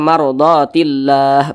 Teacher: yang kita sukunkan maka namanya berubah menjadi Mad Arid lisukun nah panjangnya boleh dua harakat boleh empat harakat hingga enam harakat